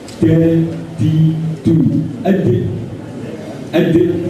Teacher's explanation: Ujung lidah terkena pangkal gigi muka yang atas. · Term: dal